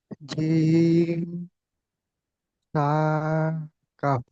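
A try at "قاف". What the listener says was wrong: কাপ, এটিও তিন আলিফ টান দিয়ে পড়তে হবে জি।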